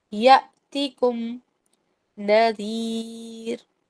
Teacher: یا جو ہے حمزہ کے ساتھ ہے، تھوڑا سا جھٹکا دینا ہے. یاتیکم نہیں پڑھیں گے ہم، اس کو پڑھیں گے یاتیکم نذیر.